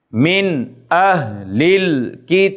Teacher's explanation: جب نون ساکن کے بعد حروف حلقی میں سے کوئی حرف آتا ہے تو وہاں پر اظہار حلقی ہوتا ہے، یعنی نون کو ظاہر کر کے پڑھا جاتا ہے۔ عین زیر نون عین، دال زبر دا عین دا، زال زیر